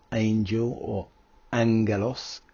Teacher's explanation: the gamma nasal where we have two gamma sounds like an NG